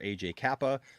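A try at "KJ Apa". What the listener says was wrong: KJ Appa. not AJ. It's KJ Appa. He said AJ Kappa.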